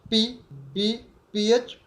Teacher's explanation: ये साउंड दोनों होंठों को बंद करके आवाज़ ब्लॉक करके फिर मुंह से बाहर निकाली जाती है